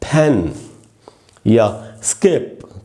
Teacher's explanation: या स्किप तो ये साउंड पूरा यहां से निकल रहा है वोकल कॉर्ड की कोई जरूरत नहीं कोई इन्वॉल्वमेंट नहीं है वोकल कॉर्ड की